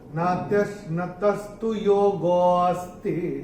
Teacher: तो योगों में गो को थोड़ा सा खींच के बोलेंगे जिससे वो अ निकल के आए।